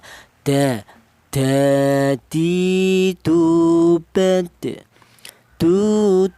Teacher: Untuk huruf dal ini keluarnya huruf berasal dari ujung lidah menyentuh pangkal gigi seri atas